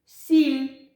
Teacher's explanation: першим стоїть звук с але його пом'якшує звук і звук с приголосний М'який приголосний